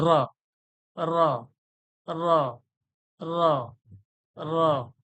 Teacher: জীবটা জিহব্বাটা উপরের তালুর সঙ্গে বেশি টক্কর খাবে না একবারেই টক্কর খাবে